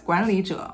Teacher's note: the concern is whether Lee turns into tone two in front of J in this circumstance it does